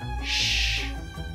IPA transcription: ʃ